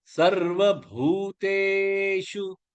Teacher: பூ நெடிலெழுத்து, தே நெடிலெழுத்து, ஷு short ஆயிடும்.